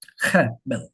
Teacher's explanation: The second syllable is a lot lower.